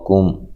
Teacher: پہلا قاف موٹا ہے، اس کو موٹا ادا کریں، لمبا نہیں کرنا